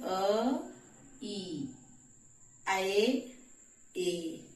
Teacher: ए और ऐ का उच्चारण स्थान कंठ और तालु दोनों होता है। · इ का उच्चारण स्थान तालु है। तो दोनों को मिलकर के बनने वाला ए कंठ और तालु दोनों से ही बोला जाएगा। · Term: कंठ तालव्य